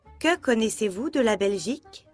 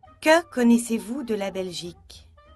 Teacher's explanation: Que, à la fin de la question, avec un mot interrogatif, je peux choisir entre 2 niveaux d'intonation. Descendre au niveau 1 pour dire que la phrase est finie. Ou monter au niveau 4 pour rappeler que c'est une question.